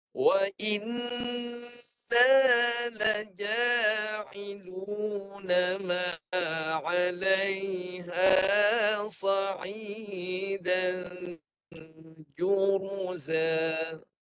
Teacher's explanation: Satu je yang risau, satu je. Jadi nun sabdu, nak sempurnakan kedua-dua nun, dengungkan 2 harakat.